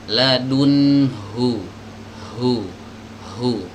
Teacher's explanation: itu harus bener-bener keluar dari tenggorokan Ini dari tenggorokan bagian bawah dari pita suara